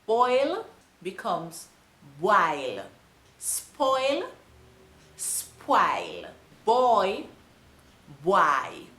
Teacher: these translations often have an intrusive W in it.